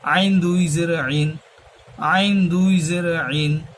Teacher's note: আইনটা হবে হলকের মধ্যখান হইতে